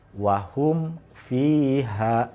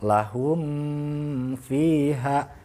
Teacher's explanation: Dengan cara apa? Dengan cara mempertemukan bibir atas dengan bibir bawah kita, dan tidak boleh disertai dengan dengung. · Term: izhar safawi